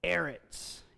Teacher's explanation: a tonic syllable, which is where the emphasis is on the first syllable of a word